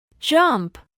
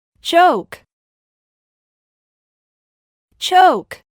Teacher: la J no debe pronunciarse únicamente como una Y o únicamente como una Ch en español, sino más bien como una combinación entre ambas consonantes